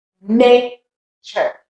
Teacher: the punch is the ne, and the rest goes down.